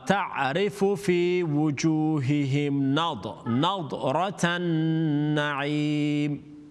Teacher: Okay, it's not nada. There's no qalqala on the da.